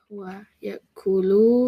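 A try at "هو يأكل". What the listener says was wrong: Yes, huwa ya'kulu. Don't make it long. Huwa ya'kulu. Huwa ya'kulu.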